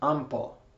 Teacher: P is M with the nose open.